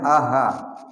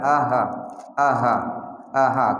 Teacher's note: Dua di pangkal tenggorokan A dan H.